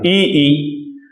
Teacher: ई अगर आप बोलेंगे तो आप देख रहे हैं कि आपकी जीभ पीछे की तरफ जस्ट तालु के नीचे सिमट जा रही है, ई, तो इसलिए इन्हें कहते हैं तालव्य।